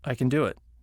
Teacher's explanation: can becomes kun unless it is stressed